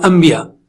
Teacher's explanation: جیسے ہی آپ کے ہونٹ ملے آواز نون کی میم میں بدل گئی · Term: اقلاب